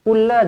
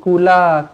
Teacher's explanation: Qul la, terus masukkan dekat lam sabdu di sini, lam kosong bertemu dengan lam sabdu idgham mutamathilain